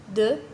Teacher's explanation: V. Consonne sonore, les cordes vocales vibrent